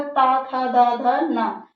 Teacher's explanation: दंत की सहायता से बोला जा रहा है, तो इसका उच्चारण स्थान क्या हो गया? दंत हो गया